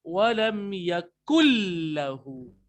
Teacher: यहाँ पे इदगाम विदाउट गुन्ना हो रहा है